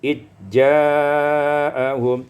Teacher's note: Pada ayat yang ke-43, izja'ahum idghamuz zal fil jim, ditukar fil jim, diidghamkan zal pada jim menjadi ijja'ahum